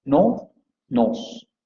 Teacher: La palabra knows se pronuncia con esta vocal posterior semiabierta labializada, y vamos a ver que tiene que en Newcastle la palabra knows se va a pronunciar igual que no